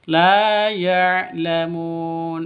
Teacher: Lamun panjang boleh 2, boleh 4, boleh 6 ketukan karena mad arid li sukun.